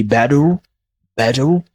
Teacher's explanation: American tend to say better with a letter D sound. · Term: flap T